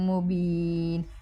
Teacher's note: مبین میں با کے بعد یا مدہ ہے لمبا کریں گے